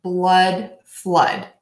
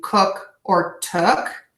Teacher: the short o sound which is very relaxed in blood and flood